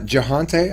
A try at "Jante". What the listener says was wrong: No, the H is silent.